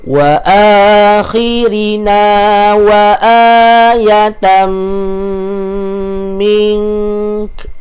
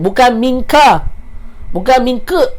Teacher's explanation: Dengung dekat sini 2 harakat. Okey, 2 harakat dan matikan dengan kaf. Bunyi ke di belakang.